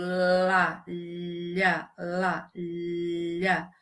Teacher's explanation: quando eu pronuncio L, por exemplo, lá, parece que nas laterais se abre como se fossem alguns canais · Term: líquidas